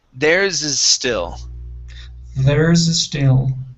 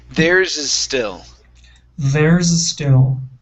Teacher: Connect the S on is and still.